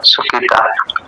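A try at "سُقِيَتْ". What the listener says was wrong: হ্যাঁ সুকি তা না সুকি ত শেষে ত না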